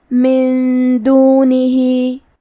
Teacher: دال حروف الاخفاء میں سے ہے، تو ہم یہ حکم کو غنہ کے ساتھ ادا کریں گے۔ من دونہی، کلمت دونہی کے آخری میں ہا کے نیچے کھڑی زیر ہے، یہاں بھی حکم ہے مد صلہ صغرا، تو ہم اپنی آواز 2 مد کے برابر لمبی کریں گے۔